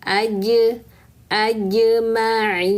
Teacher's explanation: Jim sukunnya qalqalahkan. Maka tengah lidah tempelkan ke langit-langit mulut lalu lepaskan.